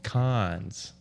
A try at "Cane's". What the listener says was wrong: No, just con. It's French. They don't pronounce half their letters. There's no S. I could have sworn it's con.